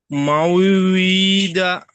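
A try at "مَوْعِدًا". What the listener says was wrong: মাও দা। আইনটা তাড়াতাড়ি হবে। আইনের যে আইন জের ই তাড়াতাড়ি হবে। আইন জের ই টান হবে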